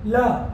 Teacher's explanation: पार्श्विक यानी जीभ के दोनों पार्श्व से होकर हवा निकलती है